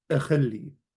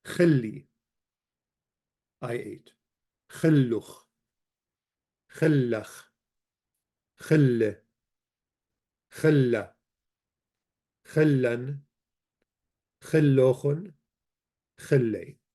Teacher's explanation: the initial alep is dropped from pronunciation. So, if you want to make it past tense, the alep goes away.